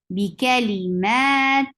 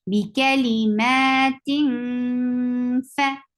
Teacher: There is ikhfa. So you are hiding the sound of tanween and going towards the makhraj of fa